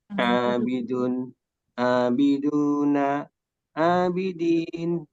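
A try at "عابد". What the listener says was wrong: Tadi saya sudah ingatkan, harokat akhirnya usahakan tidak usah disebut untuk memudahkan kita. Abid, abidun, abidin, dan seterusnya.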